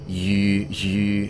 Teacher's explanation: It's like U sound. So it's like making the E sound, but with an O-shaped mouth. It's as if you're shaping your mouth so that you would make the O sound, but you're actually making an E sound through it.